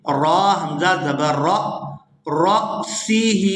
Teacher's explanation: یہاں را کو حمزہ ساکن کے ساتھ ملائیں گے تو جھٹکے کے ساتھ ادا کریں گے